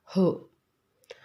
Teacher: महाप्राण आहे. बघा, ह या वर्णाचा उच्चार करताना फुफ्फुसातील हवा तोंडावाटे जोराने बाहेर फेकली जाते